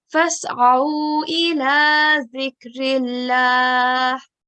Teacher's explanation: So it will similar sound, but ayn, as it's a throat letter, it will come from the middle of the throat